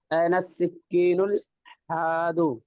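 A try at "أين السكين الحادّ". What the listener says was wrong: دال کے اوپر تشدید پڑھیں گے، این السکین الحاد.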